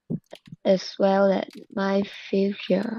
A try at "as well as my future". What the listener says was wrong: That's right.